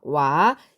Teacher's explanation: 단모음 오에 단모음 아가 결합하여 이중모음 와가 되었습니다